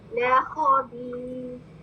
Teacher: رو کو ہم ساکن کر دیں گے حرکت تنوین ختم ہو جائے گی جو آخر رو کے اوپر ہے اس کو ہم ختم کر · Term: عارضی سکون